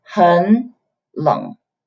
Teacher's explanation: the third tone meet each other. The first one changes to the second tone